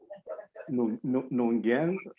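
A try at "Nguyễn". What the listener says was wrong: Well, it's actually not pronounced as it was spelled. So you are correct. It's look like it's Union, but it's Wen. It's really easy. It's Wen, Julie Wen.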